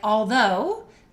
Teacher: For instance, if you have a word like although, the stressed syllable is though, and you have the O-U in there, you hear the O first.